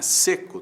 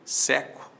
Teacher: Timbre é abertura, né? Seco tem timbre fechado, seco tem timbre aberto. Seco, o adjetivo, seco, verbo, né?